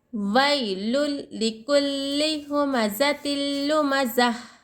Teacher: गोलता हाय साकिना बन जाती वक्फ़ करते वक्त। ठीक है, यहाँ पर गोलता है ना, इस पर हमको वक्फ़ करना है तो ये ता क्या हो जाती, हाय साकिना हो जाती।